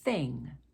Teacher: if you don't use your voice it's a soft th